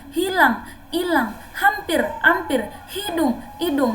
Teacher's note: ada juga penghilangan huruf fonem awal